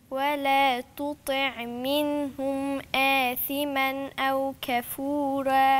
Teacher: إظهار على طول عشان في همزة وراها